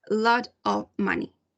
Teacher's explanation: they elide the f sound, in this case the v sound